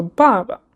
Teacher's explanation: the first one you say from higher pitch to lower pitch and the second one you just say it very softly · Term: fourth tone neutral tone